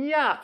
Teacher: the further front vowel, like [æ], makes the choice of the further front glide, [j], more likely. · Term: gliding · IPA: [jæf]